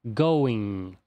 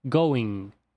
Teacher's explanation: nos dentes de cima produzindo esse som de bem tem Going esse é o som do ing que é muito comum na língua inglesa onde o g nem é pronunciado